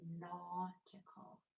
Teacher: AU is kind of like a short O sound, but it's deeper. Your jaw is dropped even more.